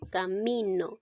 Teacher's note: En este caso, la palabra camino, la mayor fuerza de voz recae en la sílaba mi, pero no lleva tilde esta sílaba tónica, por lo tanto llega a ser un acento prosódico.